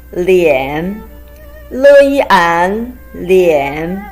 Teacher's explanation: It's a combination of le and yan with the third tone.